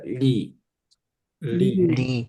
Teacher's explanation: R 대신에 L 발음으로 해서 혀를 좀 안 튀기게 발음해 주는 겁니다.